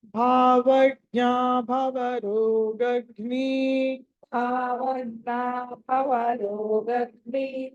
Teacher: సో భావజ్ఞలో భ మహాప్రాణము భవరోగజ్ఞలో భ మహా ప్రాణం